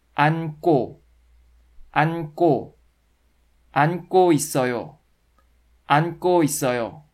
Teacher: 안 is a stem, and 고 is a part of an ending. Because of the final n consonant in the stem, the initial 그 consonant should turn into the double consonant 끄 sound.